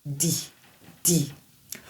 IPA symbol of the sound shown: d